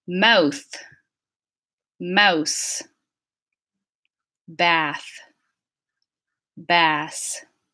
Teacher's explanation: word final voiceless TH and S minimal pairs